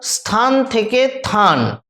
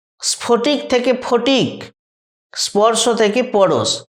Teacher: তিনটে উদাহরণেতেই দেখো প্রথমেতে ছিল দন্তস্ব, অর্থাৎ দন্তস্বটা বাদ গেছে। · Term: আদি ব্যঞ্জন লোপ